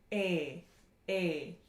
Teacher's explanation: a high, mid, front, unrounded, tense vowel